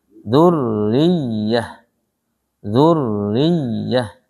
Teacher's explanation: Dzurriyah ini dia tasdidnya ada 2 di ro dan ya. Sehingga ditekan di ro, ditekan di ya.